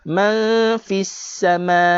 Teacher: dengung nun mati berjumpa dengan fa, ikhfa hakiki juga.